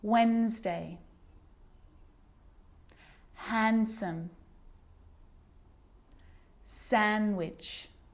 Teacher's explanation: I'm not pronouncing the D in sandwich. I'm just pronouncing the consonant N sound before it. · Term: silent